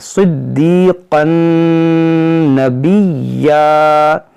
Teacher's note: انہو کان صدیقا نبیا، ٹھیک ہے، صدیقن، صدی سواد موٹا کریں گے، دال کو خوب جماؤ کے ساتھ پڑھیں گے، یہاں پر یا مدہ ہے اس کو کھینچیں گے، اس قاف کو نون سے ملا کر پڑھیں گے، صدیقن نبیا۔